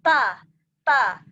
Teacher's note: Kalau ta, keluar nafas.